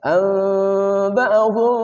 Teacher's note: nun mati bertemu dengan ba iqlab dibaca gunnah